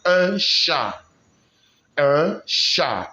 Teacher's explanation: The T is silent, not un chat, but un chat.